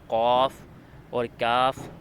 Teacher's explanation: زبان کی جڑ سے ادا ہونے والے حروف ہیں